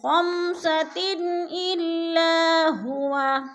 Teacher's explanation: تنوین آگے حروف حلقی میں سے حمزہ آ گیا ہے تو ادھر اظہار ہو رہا ہے، اخفا نہیں کریں گے